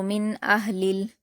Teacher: کفروا، میم پر حرکت جلد پڑھیں گے، نون پر جزم ہے تو میم کو نون سے ملا کر پڑھیں گے، اور نون ساکن کے بعد حمزہ آیا ہے جو کہ حروف اظہار میں سے ہے، اس لیے نون ساکن کی آواز کو ظاہر کر کے بلا غنہ پڑھیں گے، یعنی غنہ کے بنا پڑھیں گے۔